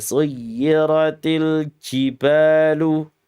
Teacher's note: Ji itu sifatnya jahar, bukan hamas.